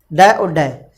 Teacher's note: जब आपकी जीभ इनको बोलती है तो उलट कर एक तरह से फेंक देती है इनको, इसीलिए इन वर्णों को, इसीलिए इन व्यंजन वर्णों को हम फेंके हुए व्यंजन, ताड़नजात व्यंजन बोलते हैं।